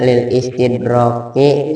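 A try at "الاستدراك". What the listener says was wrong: Ada orang al ya baca al pakai lil.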